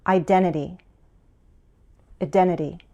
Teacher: Americans also drop the first T in this word. For the second T, we use a flap T, which sounds like a D.